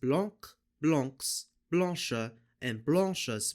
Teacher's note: every silent E is pronounced as a schwa sound instead of being silent